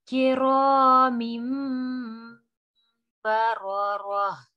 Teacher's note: را کو ہم کھینچ رہے ہیں, موٹا بھی پڑھ رہے ہیں کیونکہ را پہ زبر ہے